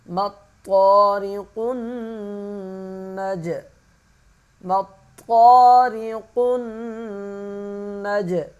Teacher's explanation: قاف موٹا پڑھیں گے، نون پہ غنہ کریں گے، جیم پہ قلقلہ کریں گے یعنی کہ آواز کو ہلائیں گے